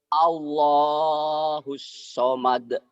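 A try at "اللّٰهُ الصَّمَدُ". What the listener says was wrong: Tadi disuruh sin nggak keluar, giliran sod masa keluar. Nih Pak, jangan jadiin sin itu mah. Allahus Allahus samad. Allahus samad.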